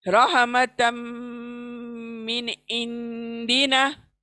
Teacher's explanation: एक नून को मैं फास्ट पढ़ रही हूँ, क्लियर पढ़ रही हूँ, और दूसरे इंदिना के नून को मैं छिपा रही हूँ नाक में। रहमतम मिन इंदिना, मिन को फास्ट पढ़ रही हूँ, देखो।